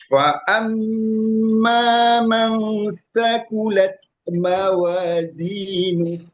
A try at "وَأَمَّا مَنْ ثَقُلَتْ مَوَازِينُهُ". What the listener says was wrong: Jelaskan sedikit lagi Z-nya. Mawazin Z.